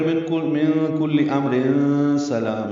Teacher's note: اگر آپ نے سلام پہ رکنا ہو تو پھر من کل امر سلام اخفا کریں گے اور سلام لام کو لمبا کریں گے اور میم پہ رکیں گے